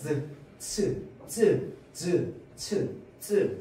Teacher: 자, 그러면 파찰음 같은 경우에는요, 이 파열음과 마찰음의 성질을 합친 거를 파찰음이라고 하죠. 자, 그래서 소리가 나오는 구멍을 한번 막았다가 열어줄 때는 조금만 열어주는 거야. 그래서 공기를 마찰시킵니다.